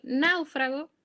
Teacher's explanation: En náufrago, la fuerza parece estar en la A, por eso siempre se dice que cuando la sílaba tónica cae en el diptongo, gráficamente se acentúa siempre la vocal abierta, es decir, la A, en ese caso.